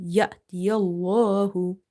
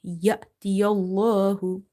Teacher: before the letter lam in the word Allah, we have fatha. We will make it heavy.